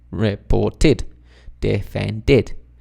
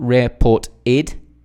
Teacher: we are connecting the speech in English, so we're adding the D to the id sound. Reported, not report-id, it's reported.